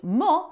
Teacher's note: The o in mo for mozzarella is short and tight. It's not like the long English o in mo, but a quick rounded sound.